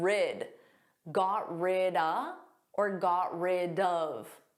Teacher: you can take the word of and you can make it an unstressed sound and say duh